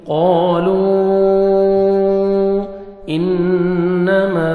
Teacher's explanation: نون مشدد غنہ کریں گے، نوز میں ساؤنڈ لے کے جائیں گے · الف واو یا حروف مدہ کے بعد نیکسٹ کلمہ کے سٹارٹنگ میں حمزہ ہے، آپ نے مد کرنی ہے، اس کو مد جائز کہتے ہیں۔ قالوا 3 سے 4 سیکنڈ ایکسٹرا آپ نے مد کرنی ہے